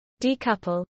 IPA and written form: ˌdiːˈkʌpəl (decouple)